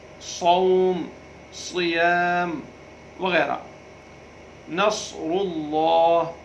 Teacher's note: جیسے ہم بولیں مستقیم، مس میں سین ہے تو سین کو بالکل باریک پڑھنا ہے تاکہ دونوں ہونٹ جو ہے کھچ جائیں۔ مس، صاد میں ہونٹوں کو آگے کی طرف جو ہے اشارہ دینا ہے، موٹا پڑھنا ہے